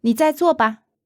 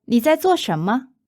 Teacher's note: Notice both those are 在做, and both are fourth tone, so they sound identical.